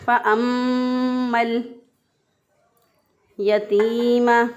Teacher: تو ہم نے اس کو پڑھا فَأَمَّا الْيَتِيمَ، تا زیر یاتی، یا مدہ ہے، یا ساکن سے پہلے والے حرف کے نیچے زیر ایک الف کے برابر لمبا کر کے پڑھیں گے، اس کو کھینچ کے پڑھیں گے۔